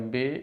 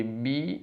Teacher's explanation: Di sini kasrohnya perhatikan, jangan sampai b tapi bi. Kemudian ro di sini karena dia berharokat fathah maka terucap dengan tafkhim atau tebal.